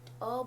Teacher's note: मध्य स्वर जिसमें जीभ का मध्य भाग प्रयोग होता है, इसमें अग्रभाग उपयोग होता है, इसमें मध्य बीच का जो भाग होता है जैसे अ बोलने पे हमारा जीभ बीच से साउंड आ रही है, कहीं टच नहीं हो रही, ये हो गया।